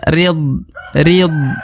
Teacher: D sukun bukan bagian dari huruf Qalqalah atau huruf pantul maka dia tidak boleh dipantulkan